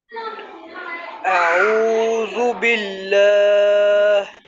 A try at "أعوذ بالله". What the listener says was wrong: آپ نے اللہ کو بہت زیادہ لمبا کیا، اللہ کے لام کو آپ نے زیادہ لمبا کیا ہے۔